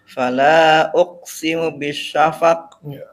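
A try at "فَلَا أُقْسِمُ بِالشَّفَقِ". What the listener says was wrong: Qalqalahnya ditampakin. Jangan uqsimu.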